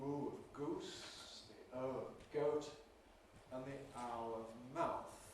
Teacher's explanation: those that move towards the close back area, the high back area